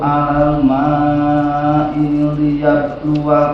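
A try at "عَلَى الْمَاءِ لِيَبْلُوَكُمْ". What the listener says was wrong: Dari i ke li-nya pendek ya.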